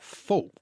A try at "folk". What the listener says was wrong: You were trying to be really etymological about that. Folk. We do not pronounce the L.